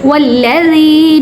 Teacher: یا مدہ کی وجہ سے ذال کو 1 سیکنڈ تک یعنی 2 حرکت کے برابر کھینچیں گے